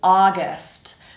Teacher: So our stress there is duh. Stress on the first syllable. And that first syllable is only a vowel sound.